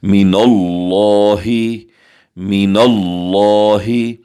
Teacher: لفظ اللہ کے لام سے پہلے نون کے اوپر زبر ہے، ہم اسے لفظ اللہ کو پر کر کے موٹا کر کے پڑھیں گے